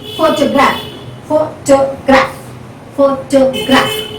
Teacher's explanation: so the first syllable is stressed